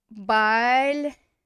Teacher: going to get pronounced as a oy because it's the stressed ending